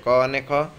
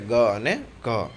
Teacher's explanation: आ चारमांथी जे जे अक्षर बोलती वखते गळानो भाग वधु ध्रुजे तेने जुदा पाडो। तो गळुं ओछुं ध्रुजे तेवा अक्षरो आवशे क अने ख, ज्यारे गळुं वधु ध्रुजे तेवा अक्षरो आवशे ग अने घ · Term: घोष अने अघोष